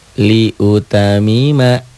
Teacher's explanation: Nggak ada yang ditahan, nggak ada yang didobel, nggak ada yang dengung.